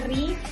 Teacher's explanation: kita bisa membacanya dengan tipis ri karena ro yang berharakat kasrah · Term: tarkik